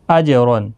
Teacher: جیم ساکن پر قلقلہ ہوگا، را پر بھی پڑھا جائے گا، اور یہاں تنوین کے بعد حروف حلقی کا عین آیا ہے، اظہار حلقی ہوگا، یہاں پر گنہ نہیں کریں گے۔